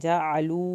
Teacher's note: جعلو واو ساکن کو کھینچ کے پڑھنا ہے